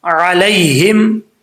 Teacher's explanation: یہاں پر علیہم نہیں پڑھنا، لام یا زبر لئی ہے، اس کو لمبا نہیں کریں گے کیونکہ یہاں پہ یا لین ہے